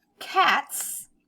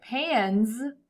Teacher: the word cats we have that s sound at the end cats and at the end of pans we have that z z sound